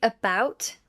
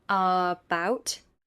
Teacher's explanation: Say, sofa with a weak last syllable, not so far. Say, about with a weak first syllable, not about.